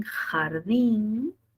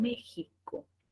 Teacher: Tiene 3 formas de escribirse ese fonema fricativo velar sordo representado por la X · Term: fricativa velar sorda